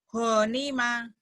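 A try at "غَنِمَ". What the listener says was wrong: Nggak ada yang panjang. Ghanima.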